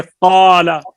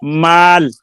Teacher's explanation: قال پر ہے، الف بھی پر ہو گیا، لیکن مال یہ باریک ہے